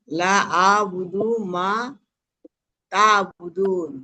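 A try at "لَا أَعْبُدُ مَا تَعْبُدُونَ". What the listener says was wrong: হ্যাঁ, এখানে লা কিন্তু অনেক টান হইতে হবে। লা, তিন আলিফ চিহ্ন দেওয়া আছে না? হ্যাঁ, তাইলে এখানে লা আবুদু মা তাবুদুন, লা আবুদু মা তাবুদুন।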